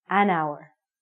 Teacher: It sounds like we're saying hour. So, because this word hour sounds like a vowel, because the H is silent, we have to say an hour.